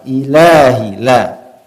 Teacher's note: Tidak boleh dipanjangkan lebih dari 2 harokat.